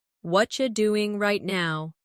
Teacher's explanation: What are you doing right now? In natural speech, what are you becomes what you.